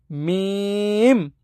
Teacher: মিম ঠোঁটের শুকনা জায়গা থেকে